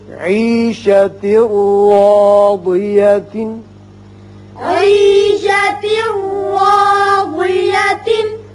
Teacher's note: عيشة راضية. یہاں تا کے نیچے 2 زیر تنوین ہے، بعد میں را ہے. یہاں ادغام بغیر غنہ ہوگا اور را پر زبر ہے، اس کو پر پڑیں گے.